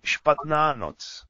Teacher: Špatná, hear the long vowel sound at the end.